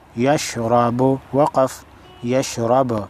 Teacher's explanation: را پر زبر ہے موٹی پڑھی جائے گی